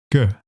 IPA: ɡ